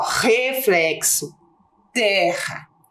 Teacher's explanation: nós temos o r Inicial e RR com som forte e nós temos o r entre vogais com sol fraco certo